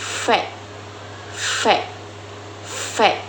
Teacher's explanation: Huruf V dibentuk dengan menggunakan bibir bawah dan gigi atas serta menghasilkan suara yang bergesekan disebut frikatif labiodental